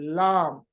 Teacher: दोनों तरफ हमारी जबान ऊपर की तरफ उठ के लाम अदा होता है,